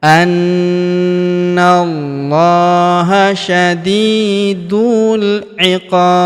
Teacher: Huruf qo kita panjangkan 2, atau en harakat. Karena di depan huruf qo terdapat alif sebelum huruf pemberhentian.